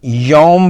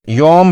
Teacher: لفظ یوم میں واو ساکن سے پہلے یا پر زبر ہے، یہاں واو لین کا قاعدہ لگتا ہے جسے بغیر کھینچے نرمی سے ادا کیا جائے گا۔ اسے معروف لہجے میں یوم پڑھیں گے، کچھ لوگ اسے اردو یا فارسی لہجے میں مجہول طرز پر یوم پڑھتے ہیں، جو کہ غلط ہے